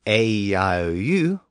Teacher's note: one vowel sound flows right into the next